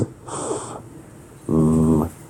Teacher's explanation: Labiodental sounds are produced with the upper teeth and the lower lip, such as f, v.